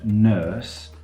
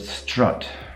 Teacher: the vowel in nurse is longer than the vowel in strut